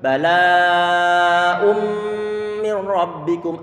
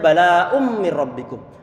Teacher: nggak ada suara nunnya pada bacaan bala ummi rabbikum, nggak ada nunnya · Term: idgham